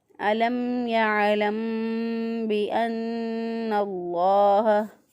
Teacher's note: میم ساکن کے بعد با ہے، یہاں پہ بھی گنہ ہے، نون مشدد پہ بھی گنہ ہے، اس لیے یہاں پر جو ہے 2 گنے ہیں، تو گنہ کر کے پڑھیں گے یہاں پر علم یعلم بأن اللہ۔